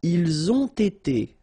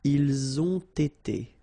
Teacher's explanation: You get first the liaison z and then you get the t.